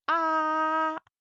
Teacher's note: First tone is ah, high and flat. Ah. The second tone is ah, go up.